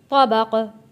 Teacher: طبقا عن طبق، طبق عن طبق، طا کو موٹا پڑھیں گے اور قاف کے اوپر جب یہاں آیت ہے یہاں ہم نے وقف کرنا ہے۔ جب یہاں ہم قاف کے اوپر وقف کریں گے تو یہ حروف قلقلہ بن جائے گا کیونکہ 2 زیر ختم ہو جائیں گے اور 2 زیر کی جگہ یہاں پہ جزم آ جائے گا۔